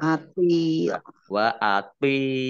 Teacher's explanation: thnya itu dibaca seperti ta tetapi eh berat